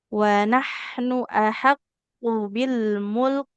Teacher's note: kemudian huruf kafnya dia harus mengalirkan nafas